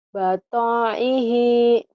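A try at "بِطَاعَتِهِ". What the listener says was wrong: Botoihi. Gak ada yang panjang. Ujungnya doang.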